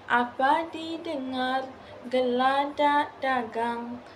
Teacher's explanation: memerlukan intonasi sedikit menaik pada akhir baris itu